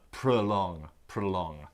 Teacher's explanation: it's got two syllables the stress is on the second and so the O in the first part sounds like uh